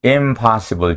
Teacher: 비음 N은 뒷자음의 위치로 동화하는 비음 동화 nasal place assimilation 현상을 보입니다.